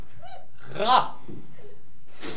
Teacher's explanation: en donnant du bout de la langue jusqu'au haut du palais, de sorte qu'étant frôlée par l'air qui sort avec force, elle lui cède et revient toujours au même endroit, faisant une manière de tremblement